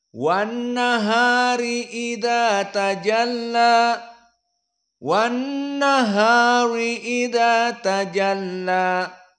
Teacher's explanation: Maksudnya bil fathah tidak ada at-taqlil, tidak ada al-imalah al-kubra. Maka semuanya dengan fathah.